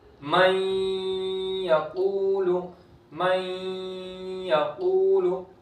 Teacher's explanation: واو ساکن سے پہلے پیش ہے، ایک الف کے برابر کھینچ کر پڑھیں گے. من یقول، من یقول، لام کو نہیں کھینچیں گے. · اور قاف حروف مستعلیہ میں سے پور کریں گے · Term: واو مدہ